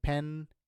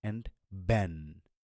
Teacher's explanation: when you say Ben your vocal cords will vibrate